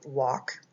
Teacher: the L is a silent L so you don't even hear the L